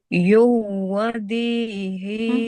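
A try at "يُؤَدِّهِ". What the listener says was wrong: Bukan yuwa.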